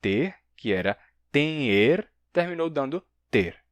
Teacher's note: terminou dando ter, sem nasalidade nenhuma. Mas no passado, a gente tem tinha, com nasalidade.